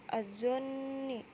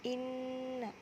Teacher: Selanjutnya tanda garis abu-abu, tajwidnya adalah gunnah, dibaca berdengung karena ada nun bertasdid pada kata az-zonni dan kata inna.